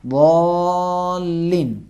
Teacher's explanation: مد کے بحث جو ضروری ہے، سورہ حمد میں آپ سب نے ملاحظہ کیا اور سنا کہ الف مدہ کے بعد تشدید آیا اور تشدید کا پہلا حرف ساکن ہوتا ہے، جزم ہے، اس وجہ سے اس کو زیادہ کھینچیں گے. ضالین 3 الف کے برابر یعنی 6 حرکات، 6 زبر کے مقدار میں کھینچیں گے. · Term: مد لازم